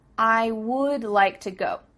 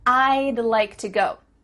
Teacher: to go do you see how we can speak quicker because we're cutting off all the sounds in the word would except for that final D